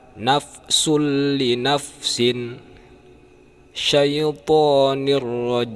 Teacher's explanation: Contoh idgham bila gunnah, tanwin bertemu dengan huruf idgham bila gunnah yaitu ro dan lam tanpa dengung.